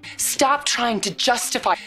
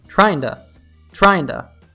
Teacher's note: examples in which the flap T is preceded by an N sound